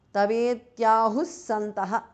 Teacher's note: Visarga changes to su there.